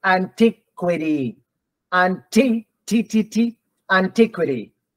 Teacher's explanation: when the letter T is stressed the t is always T not D it doesn't change to D